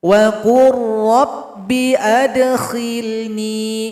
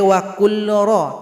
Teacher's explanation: Tidak boleh wa qul ra, tapi wa qur. Lam tidak dibaca lagi karena telah gabung kepada huruf ra. Wa qur rabbi adkhilni.